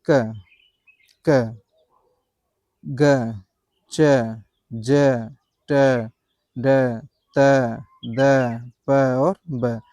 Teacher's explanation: अल्प प्राण हैं, क्योंकि इनके उच्चारण से मुख से हवा थोड़ा-सा कम निकल रही है।